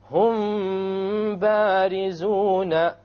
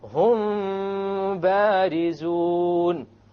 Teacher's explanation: You have a meme followed by a ba. You make the ikhfa and you have a ghunna. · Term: ikhfa shafawi